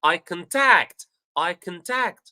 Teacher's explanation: Tact is high, it's loud, all right, and it's long.